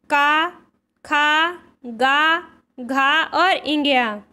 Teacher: तो जो का वर्ग होता है वह कंठ से उच्चारित होता है।